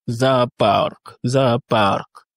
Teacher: Ici, l'accentuation se situe sur le A.